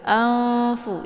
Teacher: Anfu. Jadi disamarkan nunnya kemudian siap-siap masuk ke huruf fa. Fu-nya dibaca pendek kemudian sa dibaca pendek ya. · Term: ikhfa awsat